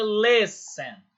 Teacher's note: Listen, L-I-S-T-E-N, é escuta. Só que o T ele não se pronuncia. Então fica listen.